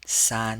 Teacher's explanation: we pronounce this with the first tone